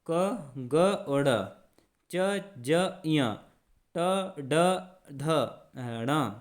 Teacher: उच्चारण के समय हमारे मुख से हवा कम निकलती है, वो अल्प प्राण